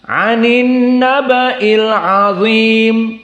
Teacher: Semuanya muraqqaqah kecuali dha. Maka dibaca dengan tafkhim, jangan datar.